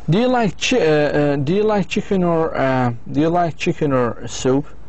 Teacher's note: With yes-no question, the answer is yes or no. The speaker's voice goes up twice.